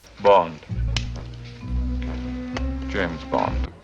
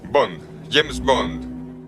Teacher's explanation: By default, we put the main accent of a phrase on its last content word, but if that word is given information, English typically de-accentuates or de-accents it. And the main accent shifts onto the last thing that's new, in this case, James. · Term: deaccenting